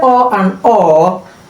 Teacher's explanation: The tongue will be low in the mouth and the lips will form a round shape.